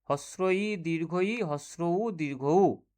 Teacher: এই চারটি হচ্ছে উচ্চ স্বরধ্বনি। মধ্য স্বরধ্বনি দুটো, এ এবং ও।